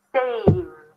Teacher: So in the word save, there is no E sound. It's just a D right after the consonant. Saved. And if it's difficult for you, then practice stretching out, holding out the sound before.